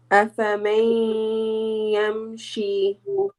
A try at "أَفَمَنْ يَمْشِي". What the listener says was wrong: Yes, here we have noon sakin followed by ya. Ya is one of the idgham letters. You need to merge the noon into ya. Idgham means merging. أفمن يمشي